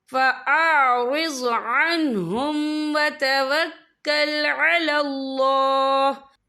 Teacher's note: वफ़ की सूरत में हा जो है साकिन हो जाएगा।